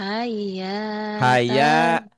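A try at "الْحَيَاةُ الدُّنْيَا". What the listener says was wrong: Jangan hayya. Kalau hayya berarti ada tasdid ya.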